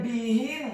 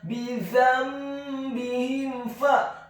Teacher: huruf ba-nya dibaca tipis, kasrah 1 harokat. Huruf ha-nya dibaca tafkhim tebal kasrah 1 harokat.